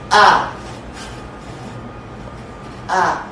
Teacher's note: essa consoante glotal, não tem nenhuma articulação na cavidade oral. A.